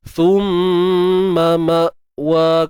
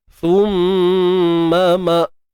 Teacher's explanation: Hamzah tu kita kena matikan dia betul-betul, sebab kita nak jaga sifat syiddah dia, tahan suara.